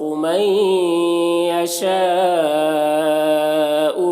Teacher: نون کو یا سے ملا کر غنہ کے ساتھ پڑھیں گے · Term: ادغام ناقص